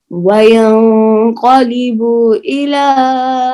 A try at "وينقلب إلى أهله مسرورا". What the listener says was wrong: बा को लंबा नहीं करें وينقلب إلى أهله مسرورا